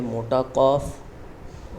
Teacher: उसको काफ पढ़ना है थोड़ा सा मोटा करके होठों को गोल करके।